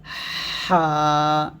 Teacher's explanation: হা এই হরফটা আমরা কন্ঠনালীর মধ্যখান উচ্চারণ করব একটা হলকের মাঝখান থেকে আমরা উচ্চারণ করব চাপ দিয়ে হা এরকম · ঠিক কিভাবে হা এই হরফটা আমরা কন্ঠনালীর মধ্যখান উচ্চারণ করব একটা হলকের মাঝখান থেকে আমরা উচ্চারণ করব চাপ দিয়ে